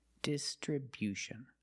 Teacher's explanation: Distribution with a stress on the first and third syllable.